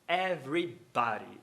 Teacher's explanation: E por quê? Porque a palavra body vai ter o D no meio das vogais, das quais a segunda é átona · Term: tap